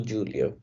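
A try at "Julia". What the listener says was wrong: यूलिया, जे को यॉट बोलते हैं ना, यूलिया। नाउन तो नाउन होता है, बट उनका प्रोनाउंसिएशन वैसे ही चलता है। जूलिया नहीं पढ़ेंगे, यूलिया ही पढ़ेंगे।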